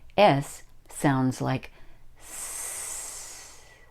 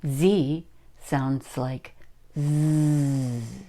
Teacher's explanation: All S sounds sound like a snake. S. We don't use our voices for this one. The Z is almost exactly the same, but with Z, we use our voices.